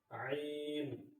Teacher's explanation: عین بھی جو ہے حلق کے درمیانی حصے سے یعنی حلق کا جو بیچ کا حصہ ہے وہاں سے عین نکلے گا